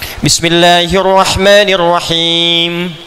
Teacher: selain diucapkan di bibir ya dari lisan ke bibir mesti ada dengung ke hidung sedikit